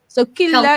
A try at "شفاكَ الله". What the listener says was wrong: Kallah. Killa is a female. if there's a fatha, right? Before the lam, it makes it thicker. That's why we say Allah.